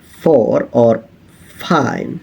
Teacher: However, there is one distinctive part of mouth that actually produce sounds, which is labiodental, which is a combination of your lip and your teeth. The lower lip making contact with the upper teeth.